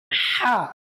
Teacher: গলায় চাপ দিয়ে হা উচ্চারণ করতে হবে